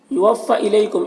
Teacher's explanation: الی میں یالین سے نرم آواز کے ساتھ جلد پڑھیں گے۔ کم کے میم میں اظہار شفوی ہو رہا ہے، اسے جلد پڑھنا ہے۔